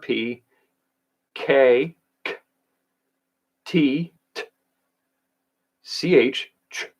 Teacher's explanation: So p for p, k, k, t, t, ch, ch are very kind of clicky sounds that you can produce. They require air, but they don't require me to use my vocal cords. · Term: plosive sounds